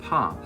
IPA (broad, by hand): p